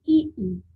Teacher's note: ई का उच्चारण स्थान तालु, मुंह के अंदर ऊपरी भाग